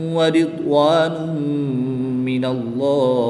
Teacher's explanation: اللہ عز و جل کے لام سے پہلے حرف پر زبر ہے، تو اس لیے اس لام کو پر یعنی موٹا پڑھیں گے۔ وقف کی حالت میں ہا کی زیر کو ساکن کر دیں گے، اور یہاں پر وقف کی حالت میں مد عارض ہوگی، 2 سے 3 الف تک کھینچ کر پڑھیں گے۔